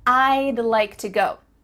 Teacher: Do you see how we can speak quicker because we're cutting off all the sounds in the word would except for that final D